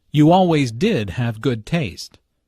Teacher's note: Notice the stress on did, to emphasize the fact that Julia does have good taste.